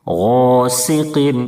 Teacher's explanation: سین کی ادائیگی میں پتلی سیٹی جیسی آواز نکلنی چاہیے